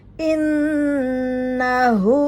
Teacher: Pada hu-nya terbaca 2 harokat karena diapit 2 huruf hidup